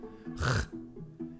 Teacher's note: It's in the back of the throat. It's very harsh, as if you were spitting out.